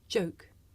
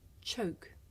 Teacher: the voiced sound that you hear at the beginning of the word joke and its voiceless partner that you hear at the beginning of the word choke